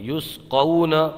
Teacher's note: واو لین ہوگا، بغیر کھینچے بغیر جھٹکا دیے پڑھیں گے